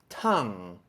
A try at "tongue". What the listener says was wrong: Use more aspiration at the beginning, like this.